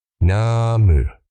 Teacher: 2 short, crisp syllables inside 1 beat.